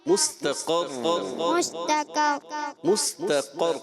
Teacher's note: قاف موٹا رکھنا ہے, قاف کو موٹا پڑھنا ہے, اور را مشدد 2 مرتبہ اس کی ادائیگی, یعنی وہیں آپ نے حرف کو دیر تک ادا کرنا ہے تھوڑا, تاکہ 2 حرف ادا ہوں.